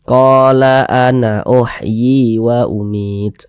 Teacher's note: qo dibaca panjang Mad thi'i panjangnya dua harakat